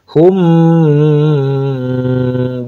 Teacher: Mim ketemu dengan ba namanya ikhfa syafawi. Diikhfakan mimnya disamarkan ya di bibir. Syafawi ba kan makhrajnya dari bibir, mim juga bibir.